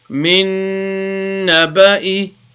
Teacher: Remember the first noon will not be read because the second noon has got a tashdid. So we drop the first noon and we join it with the second but with a gunna.